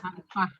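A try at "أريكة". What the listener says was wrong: Alal. Alal Arika. Tetap pakai tak marbutoh, Go. Arika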